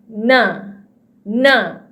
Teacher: ujung lidah kita ditekan ke langit depan. Ke langit di depan sedikit. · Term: huruf na